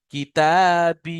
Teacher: কাফটা তাড়াতাড়ি হচ্ছে, তা এবং বাটাকে টান দিয়ে পড়তে হচ্ছে